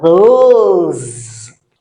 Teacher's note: S in between two vowels in French sounds a Z.